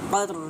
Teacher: قاف کو پر کر کے ادا کریں گے، مستعلیہ حروف ہے،